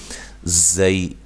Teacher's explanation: زئی یا لین ہے، یا کو نرم ادا کرنا ہے